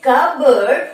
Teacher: এখানে দেখো পি is silent, এখানে আমরা পি উচ্চারণ করব না।